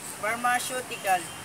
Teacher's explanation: The stress is put in third syllable.